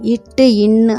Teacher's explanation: நாவின் நுனி பகுதியானது அன்னத்தின் நுனிப்பகுதியை தொடுவதால் பிறக்கின்றன